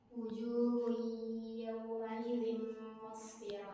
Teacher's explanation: Tanwin ketemu dengan huruf ya, maka wajib dibaca berdengong.